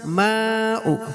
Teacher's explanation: মাদ্দে মুত্তাসিল, চারালি পরিমাণ টানবো।